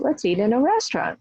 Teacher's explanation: And then the other person says, let's eat in a restaurant. So restaurant is new information. So that's why that was stressed